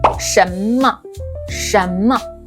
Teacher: the Chinese sh is more rolled back with the tongue a bit farther back in your mouth. Example 什么 Don't say 神, you want a nice clear sh sound.